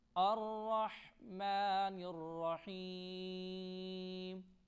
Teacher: الرحمن الرحیم، را کو موٹا پڑھیں گے اور ہا حروف حلق ہے، اس کو ہم حلق سے پڑھیں گے اور یا پر جزم ہے، آپ کو نظر آ رہی ہوگی تو تھوڑا کھینچ کر پڑھیں گے۔